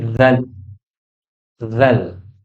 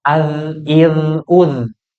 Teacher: Huruf dzal adalah ujung lidah ketemu sama gigi. Ujung gigi.